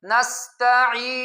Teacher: عین کو ادا کرتے ہوئے بہت زیادہ مد کرنا ٹھیک نہیں ہے، یعنی ایسے پڑھنا نستعین، لمبی مد کرنا عین پر ٹھیک نہیں ہے بہت زیادہ. · نون کو ادا کرتے ہوئے مبالغہ کرنا، غنے میں آواز کو ناک میں لے جانے میں مبالغہ کرنا، یہ ٹھیک نہیں، یعنی ایسے پڑھنا نستعین، یہ ٹھیک نہیں ہے.